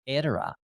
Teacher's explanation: We've been putting the accent on the first syllable with these Italian words